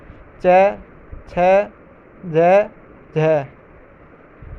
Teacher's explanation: यानी जीभ जो है पहले पूरी तरह से छूती है और फिर जो है वायु जो है घर्षण से बाहर जाती है। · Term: स्पर्श संघर्ष, स्पर्श संघर्षी